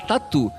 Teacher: Que quando aquele T vem antes de I, ele vira tchá. Mas antes de outras vogais, ele continua como tá.